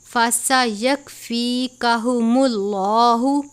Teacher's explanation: لام سے پہلے پیش ہے، لام کو پر پڑھتے ہیں